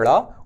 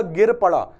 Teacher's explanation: उत्क्षिप्त वर्ण जिनमें जीभ जो है वो मूर्धा से टकराकर एकदम से नीचे आती है उन्हें आप उत्क्षिप्त कहते हैं।